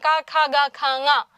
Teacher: അപ്പോ കവർഗത്തിൽപ്പെട്ട അക്ഷരങ്ങളെല്ലാം ക, ഖ, ഗ, ഘ, ങ, അല്ലെ, ഇവയെല്ലാം നമ്മൾ കണ്ഠം, അല്ലെ, കണ്ഠഭാഗം ഉപയോഗിച്ചുകൊണ്ടാണ് ഉച്ചരിക്കുന്നത്. അവയെ നമ്മൾ കണ്ഠ്യം എന്ന് പറയും.